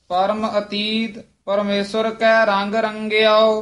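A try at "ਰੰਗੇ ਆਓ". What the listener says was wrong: हाँ, रंगे आओ इदा उचारण करना है, रंगो नहीं कहना है। रारे उत्ते टिप्पी गगे सियारी ऐड़ा उड़ा बंद मुगला औंकड़।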